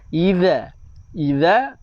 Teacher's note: Huruf zal makhrajnya keluar lidah, jangan baca dengan huruf zai.